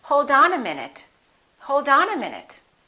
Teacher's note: the t between two vowels sounds like a d even when the t is at the end of the word and the next letter of the following word is a vowel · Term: fast d